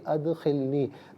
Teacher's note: دال ساکن ہوگا لیکن چونکہ حرف قلقلہ ہے تو آواز لوٹتی بھی محسوس ہونی چاہیے